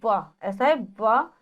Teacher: दांतो और ओस्ट का प्रयोग करते हैं · दांतों और ओष्ठ का प्रयोग करते हैं तो व, ऐसा है व, इसलिए इसको कहा जाता है दंतोष्ठ्य। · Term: दंतोर